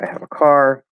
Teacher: we can drop the h right and we commonly will